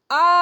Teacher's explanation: जब आप आ बोलेंगे तो यहां कंठ से यानी पीछे पीछे से स्वर निकलता है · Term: पश्च स्वर